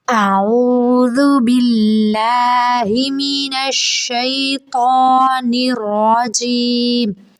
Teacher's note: را کو منہ بھر کے موٹا پڑھیں گے